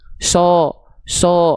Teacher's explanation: karena pangkal lidahnya naik itu vokal A akan tertransformasi jadi seperti O, bukan A lagi. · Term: huruf tebal